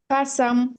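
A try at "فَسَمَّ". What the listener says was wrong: আপু, গুণনা বলুন না তো। গুণনা করলে হবে ফাসান, ফাসান।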